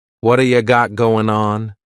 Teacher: Again we're going to drop that g at the end of the word going on.